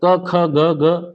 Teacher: क ख ग ग ये सब किससे निकल रहे हैं, कंठ से